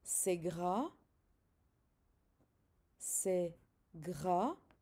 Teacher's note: You don't say the S at the end.